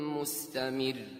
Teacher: It's light here, but the ra has something called shadda, which causes the ra to be doubled, but still you hear the ra in the light way